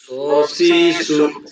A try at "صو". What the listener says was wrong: সি হবে না সুই স সুই সু সি হলে আবার সিন হয়ে যাবে এটার দিকে ফলো করেন স সুই সু